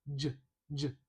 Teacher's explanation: j j This looks like it's two parts, but it's really just one symbol. j j That is the voiced uh affricate j in English. · That is the voiced affricate.